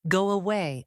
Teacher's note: They connect them using a slight W sound like this. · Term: glide